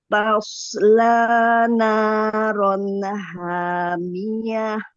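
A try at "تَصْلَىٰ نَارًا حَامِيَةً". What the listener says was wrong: Itu ada pantulan sedikit. Jangan ada pantulan.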